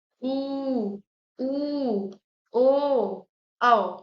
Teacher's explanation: पश्च स्वर मतलब पिछले हिस्से में, जीभ के पिछले हिस्से पर इसमें भार पड़ेगा